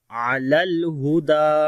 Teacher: دال کو لمبا کریں گے، اس کے اوپر کھڑی زبر ہے